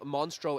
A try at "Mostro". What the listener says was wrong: Mostro, without N.